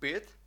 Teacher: так коротке у слові бит як я вже згадав раніше бит більше воно звучить до и ніж до і тому що є в одному складі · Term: і тверде кратке